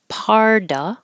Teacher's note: I don't have to say of, I can say parda, that, don't say the T.